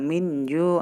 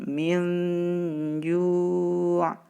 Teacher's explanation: tidak boleh kita baca dengan idhar min ju, tidak boleh, tapi kita ikhfakan, kita samarkan min ju.